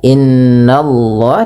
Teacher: Allahnya tebal, ya, innallah, tapi nanya tipis